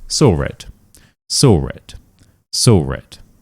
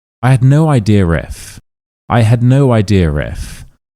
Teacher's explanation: If one word ends in an h, an h, so a schwa sound, or an o sound, and the next word starts with a vowel, quite often we add this r sound out of nowhere just to help us connect these words together